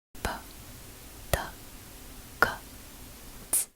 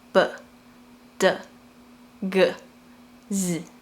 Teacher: You add your voice to it. However in Mandarin, these four sounds are unvoiced